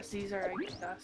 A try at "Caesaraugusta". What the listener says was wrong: It's not a Z sound, it's a C.